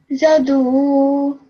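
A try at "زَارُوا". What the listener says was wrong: No, not do. This one is re, ra, ru, re, ra. So zaru.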